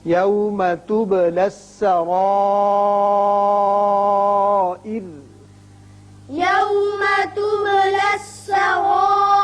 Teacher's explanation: لیکن جب وقف کر رہے ہیں تو چونکہ را ساکن ہو جائے گا پیچھے زیر ہے اس صورت میں یہ را باریک ہوگا